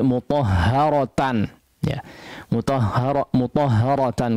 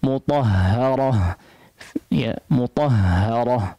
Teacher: ketika diwaqafkan maka dibaca dengan ha sukun